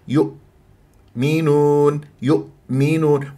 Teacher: المقطع الاول ينتهي بالهمزه المقطع الثاني يبدا بالحرف الذي يلي الهمزه يؤ منون يؤمنون ولا تسحب ضمه الياء الى الهمزه تقول يؤمنون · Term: الهمزه الساكنه